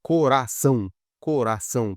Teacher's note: E essa palavra coração, coração, pode ver que o ão, ali, o são no final, a última sílaba é mais forte, então ela é oxítona